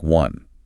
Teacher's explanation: While the word one visually starts with the vowel O, phonetically it is pronounced with a hard consonant sound, a W, sounding like one.